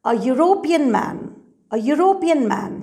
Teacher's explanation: Here, we are using a European man, though the word begins with two vowel letters, E and U. Why are we using A? Because the word begins with the sound of you.